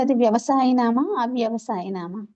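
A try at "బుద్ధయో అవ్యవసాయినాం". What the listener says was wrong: బుద్ధయో వ్యవసాయనం అంటే ఆ అనేది మధ్యలో కలిపి చెప్పాలి మాతాజీ. అవ్యవసాయనం కాదు, బుద్ధయో వ్యవసాయనం.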